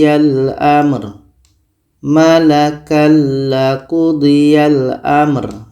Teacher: ini ada tanwin bertemu la la adalah huruf idgham bila gunah maka tanwin ini kita masukkan ke la dan tidak boleh dengung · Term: idgham bila ghunah, idgham bila gunnah